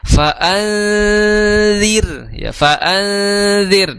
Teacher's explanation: nun sukun bertemu dalal Maka dihukumi sebagai hukum ikhfa ya namun di sini ikhfanya ikhfa tipis karena dalal itu bukan huruf isti'la · ikhfanya ikhfa tipis karena dzal itu bukan huruf isti'la